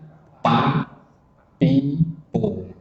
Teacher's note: masih menempelkan antara kedua bibir atas, bibir bawah, sehingga jadilah pa, pi, pu. Alhasil udaranya tidak keluar dan tidak menjadi fa.